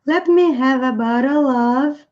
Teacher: o som do V vai emendar com o A. Nós não pronunciamos a letra E, mas nós temos let me have a bottle of.